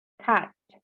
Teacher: yang berlambangkan AE, bunyinya antara A dan E